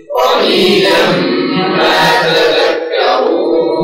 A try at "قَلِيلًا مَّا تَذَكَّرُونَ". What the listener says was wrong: لا، زد الغنة حركتين كاملتين: قليلا ما تذكرون،